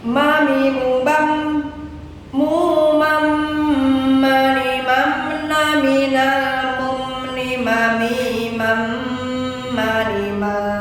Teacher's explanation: Mim masuk dengan dengung.